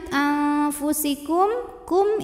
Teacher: Oke, kemudian kalau kita lanjut anfusikum, kum ini hukumnya izhar syafawi, karena mim sukun menghadapi huruf selain mim dan ba, maka mim sukun ini dibaca jelas.